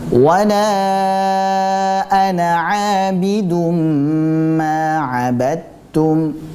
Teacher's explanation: Abidum kita tahan terlebih dahulu dengan tempo gunnah yang dipanjangkan. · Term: idgham bi gunnah